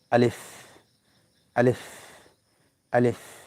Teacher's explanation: এখানে কোন গলার ভিতরে না নিয়ে গিয়ে যে জায়গা থেকে হামজাটা উচ্চারণ হয় বা মুখের খালি জায়গা থেকে আলিফ উচ্চারণ করলেই হয়ে যাবে